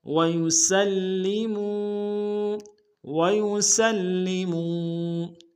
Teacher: سین کو لام کے سامنے لائیں گے، لام کے اوپر تشدید زور دیں گے، اور میم کو واو کے سامنے لائیں گے، واو مدہ ایک الف دال میں کھینچیں گے.